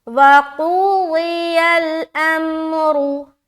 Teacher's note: اگر یہاں پر آپ اسٹاپ کر رہے ہیں تو را کو موٹا رکھنا ہے، کیوں؟ کیونکہ اسٹاپ کی صورت میں آپ را کے اوپر سکون لگائیں گے نا، جزم لگائیں گے، کیونکہ آپ کو یہاں پر اسٹاپ ہونا ہے۔